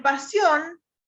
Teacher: es una palabra que se acentúa en la última sílaba y no tiene la terminación obligatoria. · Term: aguda